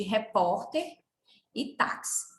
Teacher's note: as palavras paroxítonas apresentam a penúltima sílaba forte